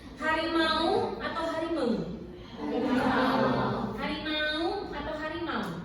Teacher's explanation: Harimau itu merupakan bunyi diftong. yang dari percampuran antara A dan U. Tidak menjadi harimau, melainkan menjadi harimau.